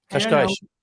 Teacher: when you have an S at the end of words and no vowel afterwards, then you're going to have this sh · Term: sh sound